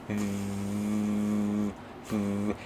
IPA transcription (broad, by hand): ð